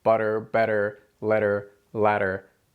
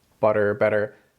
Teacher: our tongue flaps against the roof of our mouth just once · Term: tap sound